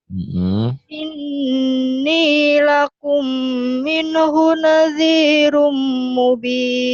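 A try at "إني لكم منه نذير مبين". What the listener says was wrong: Nah, penyakit minenya jangan ada nih. Inni lakum minhu. Jangan mina. Inni lakum minhu nadhirum mubin. Coba ini lakum. Inni.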